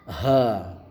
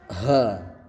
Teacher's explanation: Nah, kemudian ha besar, jadi ha sampai dada kita bergetar.